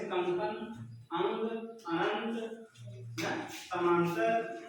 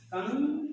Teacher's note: जब अनुस्वार बोलते हैं नासिका से वायु बहुत ज्यादा बाहर निकलती है